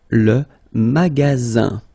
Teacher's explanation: Remember you've got only one S between two vowels. Then you get the sound Z,